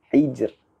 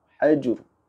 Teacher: Manakala di sini kerana huruf ha berbaris bawah, oleh itu kita kena baca huruf ra di sini dengan bacaan yang tipis.